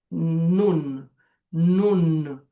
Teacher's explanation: A gente fecha o N também, não é aquele n como como n do português que fica solto no final das palavras, não, ele fecha. · E o nun, esse N, é o N que a gente finaliza ele tocando a língua no palato.